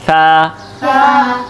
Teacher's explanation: सा पढ़ते वक्त आपके ऊपर और नीचे वाले दांतों के दरमियान ज़बान की नोक आएगी, सा। ठीक है, ताकि सीटी जो है ना उसकी आवाज़ ना आए।